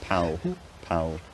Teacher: I think what it is, it's a velarized L with lip rounding.